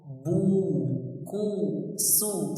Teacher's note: Terkumpulnya dua bibir untuk dimonyongkan ke depan. Bu, ku, su, seperti orang menyebut waw, karena dhammah anaknya waw.